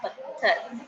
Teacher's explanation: पहला स्वर रहित है दूसरा स्वर सहित है और एक साथ ही बोला जाता है